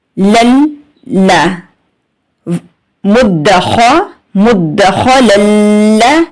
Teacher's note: لام کے اوپر تشدید ہے، لام کو 2 بار پڑھیں گے سیکنڈ لام کو.